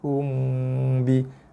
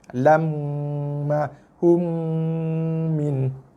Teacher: ini dengung tutup mulut, bibir perlu dikacip rapat. Tekan bibir. Ada tekanan pada kedua-dua bibir atas dan bawah.